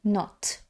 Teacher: коротке о о як у слові not таке і о наближене до а